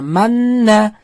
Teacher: Man degan ushlab turilyapti, ikki harakat miqdoricha n ni ushlab turasiz, o'sha-o'sha manna o'qiladi. Faqat shu n harfida ikki harakat g'unnani ushlab turasiz va n ni aytayotgan paytda labingizni oldinga chiqarib turasiz. Manna, shu n tugagandan keyin bo'ldi, yana o'z holida o'qib ketaverasiz.